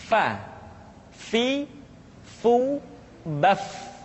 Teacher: diucapkan dengan menyentuhkan ujung dua gigi seri kita bagian atas dengan bibir bawah bagian dalam Fa seperti kita mengucapkan huruf F di dalam huruf latin Fa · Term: huruf Fa